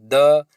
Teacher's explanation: इसमें कंपन हो रहा है लेकिन हवा कम निकल रही है, इसलिए सघोष है